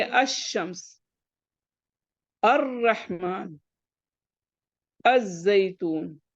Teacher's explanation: لام کا ادغام ہوگا، یعنی لام نہیں پڑھا جائے گا